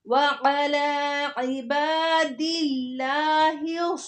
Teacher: लफ्ज़ अल्लाह और उससे पहले ज़ेर तो लफ्ज़ अल्लाह के नाम को बारीक पढ़ेंगे।